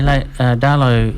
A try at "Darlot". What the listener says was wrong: Or Darlot, it's not Darlot. You don't pronounce the T, it's a sort of a French pronunciation.